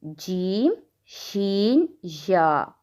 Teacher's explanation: 3 حروف زبان کے درمیان سے